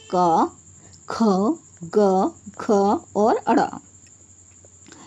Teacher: क वर्ग का उच्चारण कंठ यानी कि गले की सहायता से किया जाता है